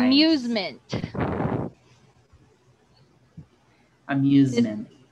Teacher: So, nagiging Z ang S natin if S is in between two vowels. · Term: American S sound